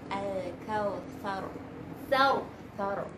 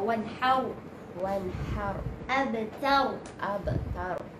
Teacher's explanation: ra tu sukun kan, dan sebelum huruf ra tu dia berbaris fathah atau dhammah, jadi akan bunyi tebal ra tu.